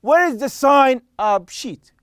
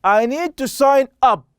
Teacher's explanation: when I'm using the phrasal verb as a noun, then it means that you are going to stress sign, okay. So here I'm stressing on sign.